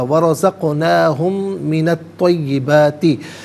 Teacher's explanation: ہم میں میم ساکن کو من کی میم کے ساتھ ملائیں گے، میم کی آواز کو غننے کے ساتھ ادا کیا جائے گا